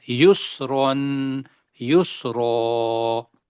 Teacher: آگے سین کی سیٹی بجنی ہے، یسرون، رو کو بھی موٹا کرنا ہے